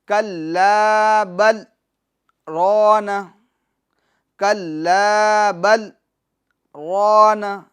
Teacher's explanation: تھوڑی دیر رک جائیں گے، سکتہ کریں گے، آواز روکیں گے، سانس جاری رکھیں گے